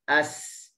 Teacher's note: huruf sin tadi saya sebut ianya akan dengar dengan tajam, kerana safir ni merupakan sifat yang kuat. Okey, safir sifat yang kuat.